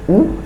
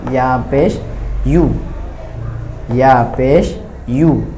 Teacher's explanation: ইয়া পেশও অনেকে উ বলে ফেলে, কিন্তু ইয়া পেশ হবে ইয়া পেশ ইউ, ইয়া পেশ ইউ।